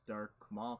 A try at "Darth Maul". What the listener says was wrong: You're saying dark. I'm getting triggered.